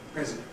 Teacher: In the noun, we’ve got [ɪ] in ‘president’ [ˈprezɪdənt]. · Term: weak vowels